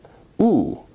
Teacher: u is a high back rounded vowel